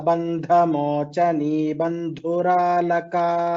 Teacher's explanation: द्वितीयपङ्क्तौ बन्धमोचनी इति नाम्नि धकारस्य महाप्राणः, बन्धुरालका इत्यत्र धकारस्य महाप्राणः।